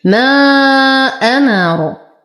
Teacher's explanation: ما أمر ألف ساكنة وبعدها همز فهو مد جائز منفصل لمد بالإشباع